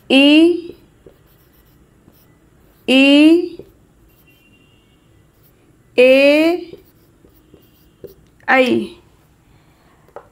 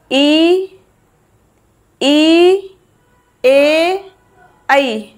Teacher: जीभ के आगे वाले हिस्से से बोले जाएंगे इ ए ठीक है ये इसलिए इन्हें क्या बोलते हैं हम अग्र स्वर बोलते हैं क्योंकि ये जीव के आगे वाले हिस्से से बोले जाते हैं।